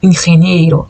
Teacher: Pero como en español no es abierto, como en portugués, nosotros decimos ingeniero